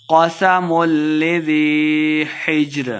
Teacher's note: ذالک قسم لذی، قاف کو موٹا پڑھنا ہے، لام مشدد ہے، میم کو لام کے ساتھ ملا کے پڑھنا ہے۔ قسم لذی حجر وقف کریں گے، حجر۔